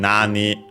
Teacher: nani on its own, all accented on the first syllable